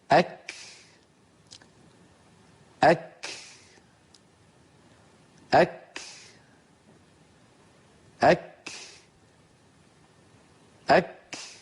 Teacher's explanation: Міне айтып жатқандай, әк бастапқы уақытта яғни тілдің арғы жақ шеті жұмсақ таңдай мен ет таңдайдың ортасына тиген кезде тию арқылы жәһр болады, яғни дыбыс жалғаспай қалады. · Міне Айман Суайт Рушди ұстазымыздың осы жаңағы айтқан шәдид хәмс әріптерін дыбыстауды көрейік. Яғни бастапқы уақытта шәдид болып, кейін хәмс болып ұласады. هكذا أك أك أك أك أك.